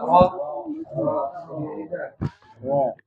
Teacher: Ujung lidah bertemu dengan gusi atas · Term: huruf ro